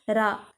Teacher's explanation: நாவின் நுனி மேல் அன்னத்தின் முதல் பகுதியை தொட்டு வருவதால் தோன்றும் எழுத்து ரா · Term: இடையின ரகரம்